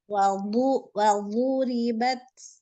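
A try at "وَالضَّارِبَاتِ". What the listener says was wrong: Botnya jangan kelewat itu ujung lidahnya. Walbu.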